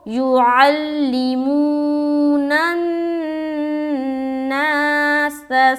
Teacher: واو مدہ ہو رہا ہے، نون کو نون سے ملا دیا اور غنہ کیا